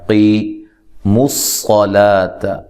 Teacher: قاف کو موٹا کرنا ہے